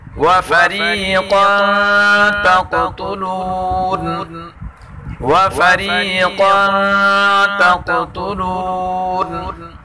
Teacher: را کو باریک پڑھیں گے، قاف کو پر پڑھیں گے اور دوسرے قاف میں قلقلہ کریں گے